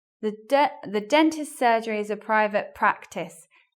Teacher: Again, the stress is in the same place, in the beginning in both instances.